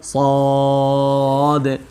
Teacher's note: এই হরফটাতে আমরা অনেকে ভুল করে থাকি, আমরা সোয়াদ বলি, সোয়াদ, ঠোঁট গোল করে ফেলি, এরকম যেন না হয় আমাদের বলতে হবে সদ